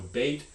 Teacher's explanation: even though phonetically it's a diphthong in the phonology it just works like a normal mid vowel